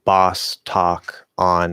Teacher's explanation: any word that would use ah and any word that would use all become just ah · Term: cot merger